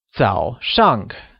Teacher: 早 is said with a falling rising tone, while 上 carries the falling tone, also known as the fourth tone.